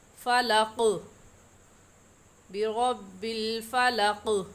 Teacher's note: और हरूफ कलकला जब साकिन हो तो इनमें हल्की सी हरकत पैदा करते हैं। हरूफ कलकला जब साकिन हो तो इनके मखरज में हल्की सी जंबिश होती है, हल्की सी हरकत होती है और ऐसे पढ़ते हैं फलक बिरब्बिल फलक।